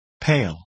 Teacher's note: move your lips into the unstressed vowel position after a when it occurs before the consonant L